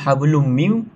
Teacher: dibaca dengan dengung dan dipanjangkan pada dua harakat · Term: idrama alghunah